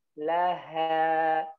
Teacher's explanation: Tidaklah ha tetap dalam keadaan tipis. Suaranya dengan lidahnya turun.